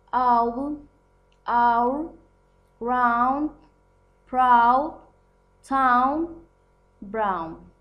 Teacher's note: This last diphthong involves tongue movement from the position of Spanish A, low center, to the position of long U, high back. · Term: out the now